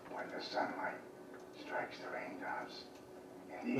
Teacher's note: when the sunlight strikes the rains this gentleman is not whispering he's trying to use his voice and it's very breathy because his vocal folds aren't closing